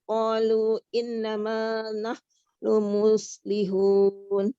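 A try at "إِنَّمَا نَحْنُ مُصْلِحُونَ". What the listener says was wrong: Coba Bun, dari qalu innanya ditekan dikit, ditahan. Innama qalu Mantap tekanannya. Tinggal ditahan agak lama dikit.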